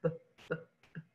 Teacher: We don't go b, but it's like b. So your lips pop. It's actually a bilabial stop